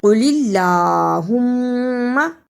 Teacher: قل اللہم اسے قل اللہم نہیں پڑھنا، قاف کو موٹا پڑھنا، لام پر کھڑی زبر ہے، اسے بھی ادا کرنا اور شد کو بھی ادا کرنا